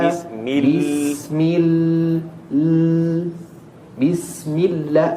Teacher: lamnya tasdid agak panjang sedikit